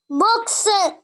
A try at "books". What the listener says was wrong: No, don't drag the word. Books. Books.